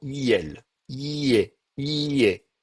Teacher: Vous voyez, on passe du I au E, il va y avoir un glissement. Et là, on appelle ça une mouillure, ou une palatalisation, parce que ça se fait au niveau du palais, hein, le palais, c'est dans la bouche, là, c'est la partie qui est au-dessus, donc on va avoir un glissement.